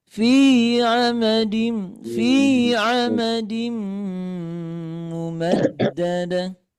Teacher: Nah, fi-nya udah turun, udah rendah.